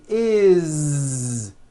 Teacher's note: we always add the ending is with a voiced Z is it doesn't matter that it's spelled with an S it's · it's always is with a voiced Z okay do this with me put your hand on your throat because I want you to feel the vibration in your neck